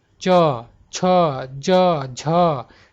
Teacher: आपका जीवा जो है क्या है तालू में ऊपर सट रहा है जा रहा है ना ऊपर यानी कि जी जो है तालू